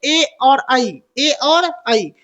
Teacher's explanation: तो ए और ऐ का जो उच्चारण है वो कंठ से होता है